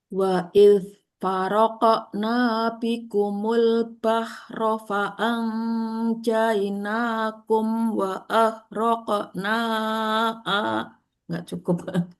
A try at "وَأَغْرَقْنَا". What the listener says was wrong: Terus ghain sukunnya belum itu juga Bu.